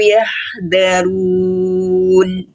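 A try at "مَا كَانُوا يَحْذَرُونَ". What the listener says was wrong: Soalnya dialirkan lagi sedikit, jangan yahdarun. Jangan darun, za. Yahdzarun. Jadi zal itu ketika dia berharokat, salah satu kesalahan yang sering kali terjadi, dan ini juga umum sekali terjadi apa?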